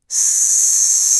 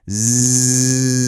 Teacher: The only difference between that s sound and that z sound is the voicing engine being turned on.